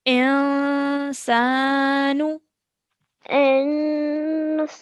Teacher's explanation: It's a partial nasal sound that we're making, okay? Holding in our nose for about 2 seconds.